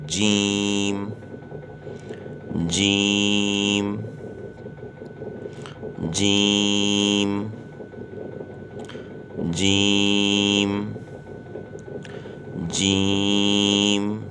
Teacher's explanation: زبان کا بیچ جب تالو کے بیچ سے لگے، زبان کے بیچ کا حصہ جب تالو کے بیچ کے حصے سے لگے گا تو یہ حرف پڑھا جائے گا